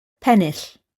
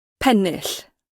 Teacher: the British English model has retained scope for the voiceless alveolar lateral fricative, and that was always the case for words of Welsh origin that we had it available. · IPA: /ˈpɛnɪɬ/